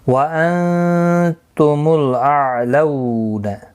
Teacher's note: نون ساکن کے بعد حروف اخفا کا تا ہے، اخفا حقیقی ہوگا